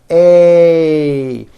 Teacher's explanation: Notice how my mouth also closes a little bit at the end of the vowel. A. And notice it's not E as in egg.